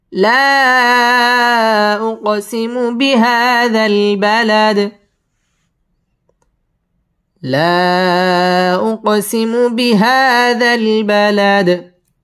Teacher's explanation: লা মধ্যে মুনফাসিল 3 আলিফ টান দিয়ে পড়তে হবে